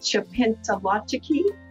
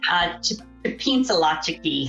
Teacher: those are nasalized L's or nasalized N's